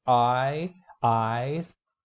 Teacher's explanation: your tongue glides from a low to high position near the roof of the mouth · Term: I sound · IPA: aɪ